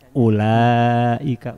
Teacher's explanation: Ul unya dibaca panjang kan aya wau betul dalam tulisan dalam musab ulaika itu ada waunya tapi menurut ilmu rasem wau yang ada pada ulaika tidak perlu diucapkan